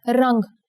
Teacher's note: Here the Anuswar makes it sound like the NG in the English word song.